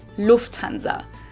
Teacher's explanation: In English, people usually say Lufthansa, but in German, we say Lufthansa. So the emphasis is on the first syllable